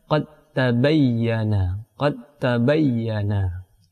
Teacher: Langsung diidghamkan kepada huruf ta, tidak lagi dibaca qalqalah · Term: idgham mutajannisen